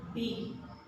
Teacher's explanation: your both lips touch together and the vibration sound comes from the throat. B.